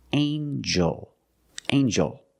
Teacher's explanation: the G makes a JJ sound like jump and Juice together with the n a regular n Sound not the nasal